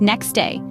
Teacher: In rapid speech, it's often pronounced more like next day. The T sound? Vanished.